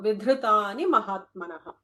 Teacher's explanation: You don't have to hold for the dhr, but it is a Mahaprana dha with a the vowel one.